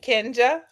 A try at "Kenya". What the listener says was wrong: Hi, look, it's Kenya. The J is silent.